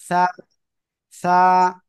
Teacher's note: জিহ্বার আগা, সামনের উপরে দুই দাঁতের আগার সঙ্গে লাগিয়ে উচ্চারণ হবে।